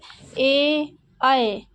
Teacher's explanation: होते हैं कंठ तालव्य ए ऐ ये जब हम बोलेंगे तो ऐसा लगेगा कि मतलब कंठ से भी आवाज आ रही है और तालव्य से भी तालव्य में भी जीभ टच हो रही है ए ऐ जीभ